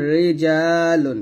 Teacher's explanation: হলে বা র তাশনের নিচে জের হলে তখনই কি করতে হবে রটাকে আমরা পাতলা করে বলবো